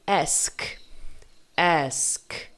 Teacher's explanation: percebe que no k não vibra tua voz se vibrar tá falando errado mas não pode vibrar es não